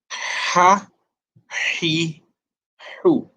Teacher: It's an airy sound, and the airy sound is not lost if the vowel changes. So we have the letter Ha with an A sound giving us Ha, Ha with an E sound giving us He, and Ha with an U sound giving us Hu.